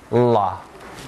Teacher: The tip of the tongue comes up to the alveolar ridge and closes there, touches the alveolar ridge. · Whereas for la, the sides of the tongue are left down. Sounds in which the side of the tongue are left unclosed are called laterals.